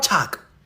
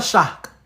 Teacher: In isiZulu, they pronounce the sibilant sh, not a ch.